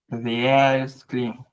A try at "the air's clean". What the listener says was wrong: I feel like you're still trying to do it the way we did it before. Remember, it's now only 3 syllables. The air's clean.